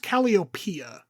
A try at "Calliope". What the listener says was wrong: This one didn't have an A at the end. It just ends in PE, the way I saw it written.